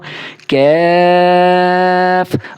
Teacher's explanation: مثال کے طور پر میں اب یہ کیف کو پڑھ رہا ہوں، کیف، اب میں محسوس کر رہا ہوں کہ جہاں سے قاف ادا ہوتا ہے وہاں سے ذرا ہٹ کے منہ کی جانب آ کے میں کیف کو نکال رہا ہوں، تو اس وجہ سے اس کا مخرج ہو گیا۔